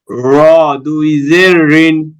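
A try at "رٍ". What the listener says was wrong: দুই জের একটু পাতলা হবে র দুই জের রিন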